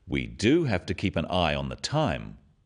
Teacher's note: notice the emphasis on the word do